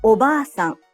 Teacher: The a in ba is held for 2 claps. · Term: long vowel